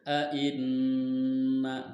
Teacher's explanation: Ketika dibaca huruf nun harus didengungkan antara 2 atau 3 harokat. Ainna. Nah, itu didengung. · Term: gunnah